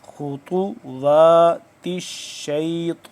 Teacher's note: خطواتا شین کے ساتھ مل رہا ہے، شین کے اوپر شد ہے اور آگے طا پھر موٹا، خطوات الشیطان، انہ لکم عدو مبین،